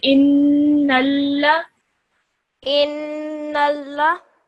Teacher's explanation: Hold that noon sound in your nose for around 2 seconds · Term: nasal sound